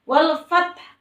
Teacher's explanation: Wal fath taknya juga tak sukun, harus ada udara yang mengalir dari mulut kita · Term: sifat hamas